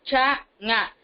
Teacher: இடைநாவும் இடை அன்னத்தை தொடவும் சானா பிறக்குது